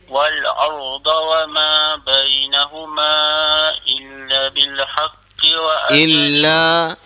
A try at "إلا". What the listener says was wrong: إلا tu dua harakat. وما بينهما إلا بالحق. Wa ma tu kalau boleh ma tu cukup dengan dua harakat saja. Kalau wa ma tu dah ada lebih pada dua. Wa ma bainahuma. Ambil wa ma.